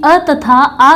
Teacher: तो देख लेते हैं कि अ तथा आ का उच्चारण स्थान कंठ है। कंठ होने के कारण इसे कंठ्य वर्ग में रखा गया है।